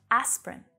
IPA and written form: 'æs prin (Asprin)